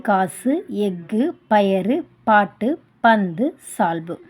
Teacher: கு, சு, டு, து, பு, ரு இந்த 6 வல்லின உகர எழுத்துக்களில் முடிஞ்சிருக்கு. தனக்குரிய ஒரு மாத்திரையிலிருந்து குறைந்து ஒலிக்கும் உகரம் தான் என்ன சொல்லுவோம்? குற்றியலுகரம் அப்படின்னு சொல்கிறோம்.